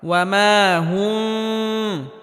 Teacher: মিমে হালকা আওয়াজ জারি রেখে উচ্চারণ করতে হবে তবে গুন্নাহ করা যাবে না